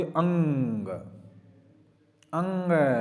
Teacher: इसमें नाक और मुंह दोनों का सहारा लेना पड़ेगा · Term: अनुनासिक